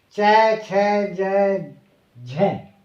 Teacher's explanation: इनका उच्चारण करते समय, इन अक्षरों का उच्चारण करते समय अपनी जो जीभ है वह तालवा के निकट मुंह में चली जाती है ऊपर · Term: तालव्य